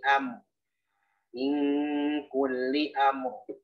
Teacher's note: Jadi mimnya bainiyah pertengahan sifatnya tidak terlalu ngalir, tidak terlalu tertahan udaranya